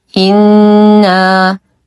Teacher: نشد النون بغنه اكمل ما تكون